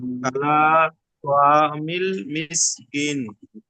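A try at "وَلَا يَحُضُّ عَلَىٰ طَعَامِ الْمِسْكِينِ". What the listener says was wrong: তো আইন টান দেন না ভাই, আইন আমি 3-4 বার যতবার বলছি টান দিচ্ছি, আপনি টান দিচ্ছেন না কেন? ওয়ালা ইয়াহুজ্জু আলা বলতে হবে।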